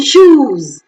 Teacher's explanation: Oo as in shoes is back, close, rounded, long vowel